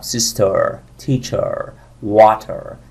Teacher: تو امریکن زبون رو شلاقی میبریم عقب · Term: امریکن آر